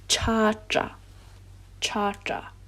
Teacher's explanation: possession will always change the first vowel to an a